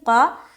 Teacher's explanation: قاتلتم، قاف زبر قا، قاف موٹے حروف میں سے ہے تو اس کو ہم منہ بھر کر بولیں گے